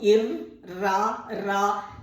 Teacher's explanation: நாக்கை மேல் அன்னத்தின் மேல் வைத்து மூச்சுக்காற்று, வயிற்றிலிருந்து வரக்கூடிய மூச்சுக்காற்றை தடுத்து இர் என்று சொல்லணும். இர், ரா, ரா என்று மூச்சுக்காற்றை தடுத்து சொல்லணும். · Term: வல்லின ஒலி